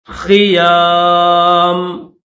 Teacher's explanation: میم کے نیچے زیر ہے، ملا کر پڑھیں گے تو زیر پڑھیں گے، اسٹاپ کریں گے تو زیر نہیں پڑھیں گے.